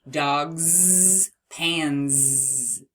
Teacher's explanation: Here, though, we have dogs and pans because dog ends in a voiced G, g, g, g, and pan ends in a voiced N